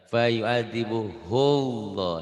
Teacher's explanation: Seakan-akan ada wawunya, ada w.